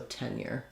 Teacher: So longer on 10 and shorter on year.